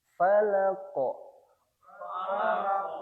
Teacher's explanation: Untuk qalqalah dari huruf qof. memantul dengan keras dan membentuk oval falaqo diangkat jadi bukan ke samping falaq ya bukan falaq tapi falq ke atas falq giih qul auzubirabbil falaq qul auzubirabbil falaq.